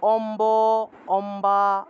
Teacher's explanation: অথবা আ যদি থাকে এভাবে বফলা এর আগে তখন সেই বফলা টাকে আসলে বর্গীয় বলা হয় এটাকে যেভাবে আছে ব এর মত করেই উচ্চারণ করতে হয় এটাকে উ রূপে উচ্চারণ করা যায় না এটা যে বফলা থাকবে